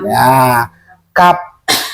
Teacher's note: Yang bedanya adalah sifatil huruf. Kalau kap memakai angin, kalau kop tidak memakai angin